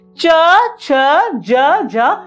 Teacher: च जो वर्ण है च, इसको जब हम उच्चारण करते हैं, जो जीवा जो है वो हमारे तालु जो है उसको स्पर्श करते हैं। जैसे इसीलिए इसको तालव्य वर्ण कहा जाता है।